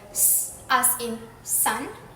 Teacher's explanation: the tongue moves close to the alveolar ridge, creating a high-pitched hiss as air flows through the gap.